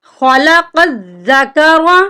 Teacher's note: यहाँ पर 2 नुक्तों वाली कॉफ है, इसको हम मोटा करके पढ़ेंगे और जाल के साथ मिलाएंगे और जाल को सख्ती से पढ़ेंगे, क्योंकि जाल के ऊपर शद है।